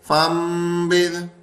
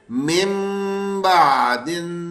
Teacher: نون ساکن یا تنوین کے بعد حرف با اگر آ رہا ہے تو ہم نون ساکن کو میم ساکن سے بدل دیں گے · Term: اقلاب کا غنہ